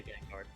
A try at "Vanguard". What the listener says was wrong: I think he's basically saying because you're adding the D slightly at the end.